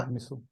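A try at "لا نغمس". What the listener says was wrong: नहीं नहीं, सू क्यों? साकिन करेंगे ना। ला अगमिस ला नगमिस।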